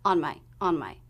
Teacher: the words on and the next function word whether it's my your his or her will be unstressed